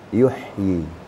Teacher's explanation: Ha itu kan wastul halak, di tengah-tengah tenggorokan, dia terasa yuhyi. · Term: huruf ha